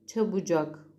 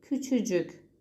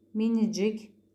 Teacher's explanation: K sesi ile biten kelimelerde cik eki getirildiğinde kelime sonundaki K düşer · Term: ünsüz düşmesi